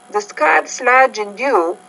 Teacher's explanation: So you had rising inflection on the first two points. Your inflection kind of dropped on the last one.